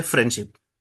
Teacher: so the D sound is omitted